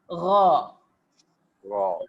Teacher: Manakala ra ni, dia bergetar je, dia tak ada angin keluar. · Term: ghain